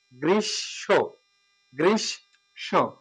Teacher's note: শয়ের সাথে যুক্ত হলে ময়ের উচ্চারণ হয় না, ওই শটা দুইবার হবে। সঠিক উচ্চারণ বাংলায় গ্রীষ্ম, গ্রীষ্ম।